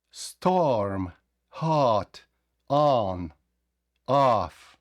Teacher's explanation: здається, що вони вимовляють ат, ан, а, ніби так вимовляють, але це і о, і а до купи